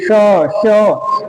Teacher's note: इनका उच्चारण करने में ऊष्मा बाहर को निकलती है। ये श ऐसे उच्चारण करने में जो हवा है कहीं ना कहीं रगड़ करती है। घर्षण करती है। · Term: उष्म व्यंजन